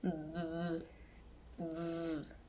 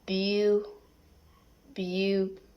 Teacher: Characteristic labiodentals, fricative, and voice.